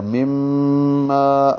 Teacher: ما الف مدہ ہے، 2 حرکات لمبا ہوگا